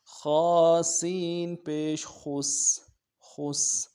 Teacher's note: خا کو موٹا کرنا ہے، سین سیٹی کی آواز باریک